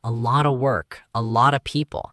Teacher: a lotta, that is a lot of. The F disappears completely.